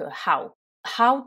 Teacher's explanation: attention on ne le prononce pas ho mais how bon déjà on prononce la lettre H comme dans quasiment tous les mots en anglais et ici le oow fait un son long